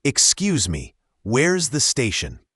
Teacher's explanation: The X sound is often like a sound and the mi is quite short. Also, where is often blends together almost sounding like where's